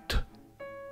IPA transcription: th